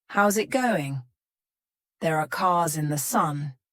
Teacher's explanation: in each of these words the S becomes a z sound